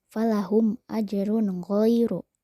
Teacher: Huruf ro berharokat tanwin domah menghadapi huruf go. Maka harus dibaca jelas. · Mim mati bertemu alif, maka harus dibaca jelas. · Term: izhar, izhar syafawi